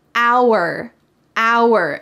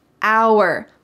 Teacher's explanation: notice that the h is silent